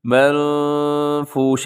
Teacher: آگے جو المنفوش میں اخفا ہو رہا ہے، نون ساکن کے بعد فا ہے تو یہاں پر اپنے منفوش ایسے آواز کو ناک میں لے کے جانا ہے۔